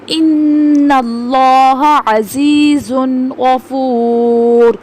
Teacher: تنوین کے بعد غین آ رہا ہے، غین حروف حلقی میں سے ہے اس لیے ہم نے یہاں پہ اظہار کیا ہے